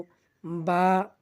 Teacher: বা হরফটি আমরা দুই ঠোঁট হইতে উচ্চারণ করব